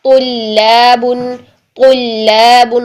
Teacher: ये लाम आपका मोटा नहीं होना चाहिए तो की वजह से, तुल्ला नहीं, तुल्लाबुन, तुल्लाबुन, तो करके लाम बारीक।